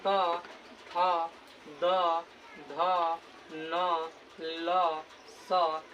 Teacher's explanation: दंत्य वर्ण, क्योंकि इसका उच्चारण दांत से होता है।